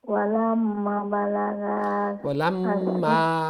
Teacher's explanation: মিমের পরে তাসদিদ আছে, মিমে গুন্না হবে। আবার মিমের পরে আলিফ আছে, অর্থাৎ 2 হরকত পরিমাণ লম্বা হবে।